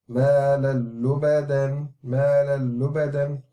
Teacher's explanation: So this is not the lam being merged into the lam, this is the noon sakin within the tanween which is being merged into the lam